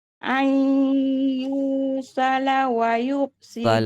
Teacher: Gunnah ada gunnah, nun mati bertemu dengan ya.